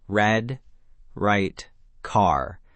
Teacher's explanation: Your tongue pulls back and curls slightly, floating in the middle of your mouth without touching your teeth, your gums, or the roof of your mouth at all.